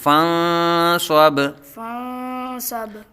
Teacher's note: نون ساکن کے بعد حروف اخفا میں سے سواد آ رہا ہے، تو نون ساکن میں اخفا کریں گے